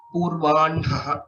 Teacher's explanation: N is pronounced first and then Hakara. This is the traditional practice.